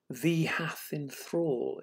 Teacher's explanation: 'Thee hath in thrall' is a very strange four-syllable line, almost got four strong stresses in it